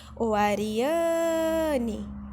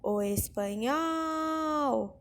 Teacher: A sílaba mais forte da palavra Ariane é o an. Por quê? Porque é onde eu me demoro mais.